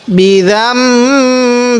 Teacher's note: এই মিম সাকিনের পরে যখন বা আছে তখন সেখানে গুন্না করতে হবে